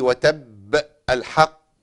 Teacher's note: المشدد الموقوف عليه من المقلقل زي وتب الحق، دي بتبقى قوية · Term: القلقلة